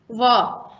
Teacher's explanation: व का उच्चारण दांत के द्वारा हल्का सा ओठ को टच करके किया जाता है